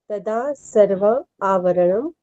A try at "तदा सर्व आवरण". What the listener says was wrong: सर्वा मत पढ़ो, सर्व पढ़ो उस टाइम पे केवल। अगर आप संधि विच्छेद करके पढ़ रहे हो तो उनकी मात्राओं का ध्यान देना है।